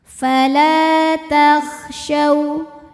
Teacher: karena ada alif didahului fathah, maka huruf lam panjang dua harokat